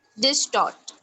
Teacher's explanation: Tort will be stressed.